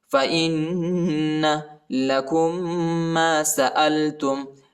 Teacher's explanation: حمزہ کو نون کے ساتھ ملائیں گے، ادھر غنہ بھی کرنا ہے